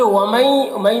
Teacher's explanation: ومئی میں ادغام ناقص ہو رہا، غنہ کے ساتھ میں پڑھیں گے۔